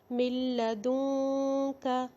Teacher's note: جب ہم نے ادغام بلا غنہ کیا تو نون ساکن لام کے اندر مکس ہو گیا، اتنا مکس ہوا کہ اس کی آواز ہی نہیں آئے گی. پڑھا جائے گا من لدنک.